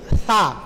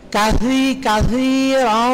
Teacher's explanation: সাটা একটু জিহ্বার আগাটা বের করে দিবেন